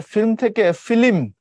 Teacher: একটা ল তার সাথে একটা অতিরিক্ত ই যুক্ত হচ্ছে কোথায় মাঝখানে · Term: মধ্যস সরাগম